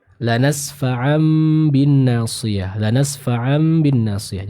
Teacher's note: cukup mengubah bacaan dari huruf nun ataupun tanwin menjadi huruf mim · Dirubah menjadi suara dari huruf mim dan ditahan dengan kadar kurang lebih 2 harakat. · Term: iqlab